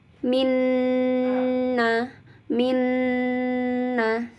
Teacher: mengucapkan Nun dan mim yang bertasydid ini tekan lebih lama ya di tahan lebih lama dengan disertai dengung rasakan di rongga hidungnya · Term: ghunnah